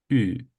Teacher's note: are going to have a very small gap between your lips your lips are going to be round and your tongue is going to be in in front of your mouth and it's going to be the sound U so to make